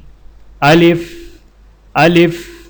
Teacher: الف کو بغیر کھینچے لام کو فا کے ساتھ فوراً ملائیں